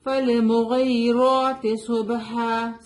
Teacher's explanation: صاد از heavy letter. اس کو سین کی طرح نہیں پڑھنا ہے.